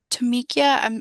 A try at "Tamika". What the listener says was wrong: Tamika, my mom just threw an I in there because that's what she wanted to do, but that's okay.